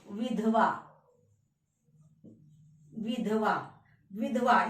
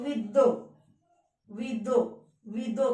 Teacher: ये ध की ध्वनि, ध वर्ण की ध्वनि द में परिवर्तित हो रही है।